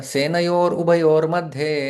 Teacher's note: संधि युक्त शब्द बनता है रेफ में परिवर्तन होता है विसर्ग का दोनों जगह पर